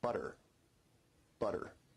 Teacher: notice where we write it with 2 t's in English that your tongue is producing a tap sound there